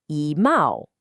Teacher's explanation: When E is followed by a first, second, or third tone character, it changes to a falling fourth tone. And since ma is a rising second tone, the first tone of e has to become a fourth tone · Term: tone sundi